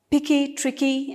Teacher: the stress is on the second last syllable of the words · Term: feminine rhyme